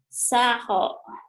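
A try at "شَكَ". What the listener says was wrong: Lihat dulu itu hurufnya apa, yo. Mana di sini enggak ada ho. Ho itu kalau ini kasih titik jadi ho nih, Bu. Ini ho, ini go, ini ko, Bu.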